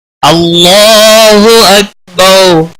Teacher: اس کے پچھلے حرف کے اوپر جب زبر ہوتی ہے تو اللہ کا لام موٹا پڑا جاتا ہے۔ اس کے اوپر کھڑی زبر ہے، ایک الف کے برابر کھینچ کر پڑھیں گے۔